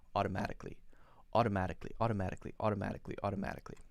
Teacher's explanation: instead of kali, I say kli, one sound.